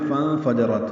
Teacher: یہاں پہ فَانفَجَرَتْ ہے، نون ساکن پہ اخفا ہے